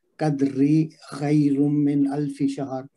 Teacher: لیلۃ القدر میں لئی میں پھر آ رہا ہے یائے لین آ رہا ہے، اور القدر میں پھر ویسے ہی پڑھیں گے، دال پہ ساکن ہے کلکلا کریں گے، اور را پہ یہاں چونکہ رکیں گے تو را کو ساکن کر دیں گے، تو القدر پڑھیں گے، را موٹی پڑھیں گے۔ اگر ملا کے پڑھیں گے تو قدری خیر من الف شہر، تو پھر اس میں را باریک پڑھیں گے، اور دال پہ کلکلا صغرا ہوگا۔